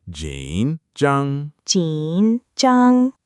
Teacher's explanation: Almost. The first part is third tone. Jǐn falls and rises a little. The second is first tone. Zhāng, flat and high.